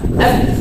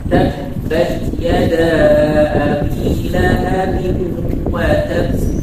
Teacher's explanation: Makhraj huruf ba dengan merapatkan kedua bibir secara sempurna dengan lembut. Makhraj atau tempat keluar huruf ba adalah merapatkan kedua bibir dengan lembut, ya, bukan dengan tasyaddud atau bisyiddah.